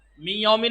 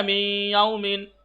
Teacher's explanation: इदगाम गुन्ना यानी नाक की फिजा से खींच के अदा किया जाएगा। एक तो नाक की फिजा से अदा करना है मी, और थोड़ा खींचना है